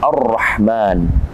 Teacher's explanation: Halo Bismillahirohmanirohim kemudian ada ar-rahman al-islam bertemu dengan roh auratnya bertasydid maka alif lam ini disebut dengan alif lam yang tidak dibaca atau alif lam syamsiah · Jadi tidak dibaca alif lam, langsung dia masuk kepada huruf ra. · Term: alif lam syamsiyah